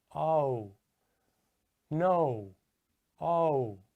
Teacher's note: if you listen closely, you can hear it starts with ah and it ends with oo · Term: diphthongs